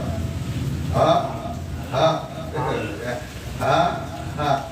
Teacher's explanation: ketika mengucapkan ha hamzah, mengucapkan ha itu letaknya di pangkal, ya, di dada. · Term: adnal halqi